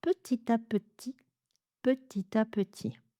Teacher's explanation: le P est moins marqué qu'en anglais, c'est-à-dire on va lâcher moins d'air derrière · on a la liaison, on a un beau découpage des syllabes en syllabes ouvertes, qui se terminent toutes par un son de voyelle